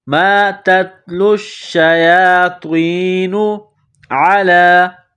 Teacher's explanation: گلے کے درمیان سے زور لگا کر عین کو نکالیں گے